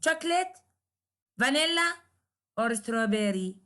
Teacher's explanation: A rise occurs on each item in the list, except on the last. So rise, rise, rise, except with the last, in which there is a full, indicating that the list is complete.